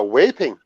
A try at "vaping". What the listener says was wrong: Yeah, in English it has a V in it. Danes